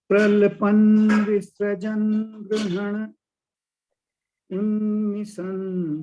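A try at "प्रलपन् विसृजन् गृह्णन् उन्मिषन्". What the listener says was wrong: नहीं, गृह्णन् यहाँ पे रुकना है। पॉज जो लेते हैं ना हम लोग, आधा श्लोक आधी पंक्ति का, वो पॉज गृह्णन् के बाद है।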